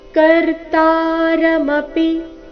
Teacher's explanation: ಕರ್ತಾರಮಪಿ ಶಬ್ದದಲ್ಲಿ ತಾ ಮಾತ್ರ ದೀರ್ಘ